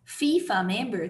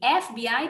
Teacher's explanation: FIFA member tem o som de F no início, então o som de consoante, e FBI tem o som de E